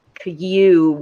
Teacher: For cube, you're like cube with that slight Y sound in there beforehand.